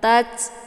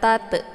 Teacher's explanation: Tatslu berhubung di sini adalah ta sukun ya. Ta sukun itu sifatnya adalah hamas. Jadi ada sedikit desis angin. Tats ya. Ada desis anginnya bukan tat.